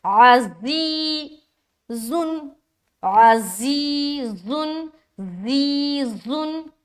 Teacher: زا کو نہ سختی کے ساتھ ادا کرتے ہیں اور اس میں سیٹی والی آواز آتی ہے، تو ہم پڑھیں گے اس طریقے سے، عزیزن، عزیزن، زیزن، ٹھیک ہے۔